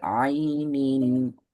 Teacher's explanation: அடுத்து ஐனோட உச்சரிப்பு இன்னும் கொஞ்சம் தொண்டையிட கீழே வரணும். அழுத்தம் கொடுத்து வரணும். ஐனின். تسقى من عين آنية.